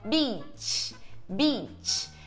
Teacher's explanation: O primeiro é um I longo, a gente tá com os lábios assim quase sorrindo